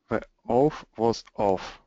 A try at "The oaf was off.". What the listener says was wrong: So when we say oaf, it's an O, O, O. And when we say off, it's an ah, ah, ah.